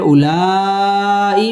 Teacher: মদ্দে মুত্তাসিল চার আলিফ টেনে পড়তে হবে